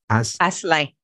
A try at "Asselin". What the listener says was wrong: Asselin. Asselin. You don't say the N at the end. Just Asselin. Almost like Ash.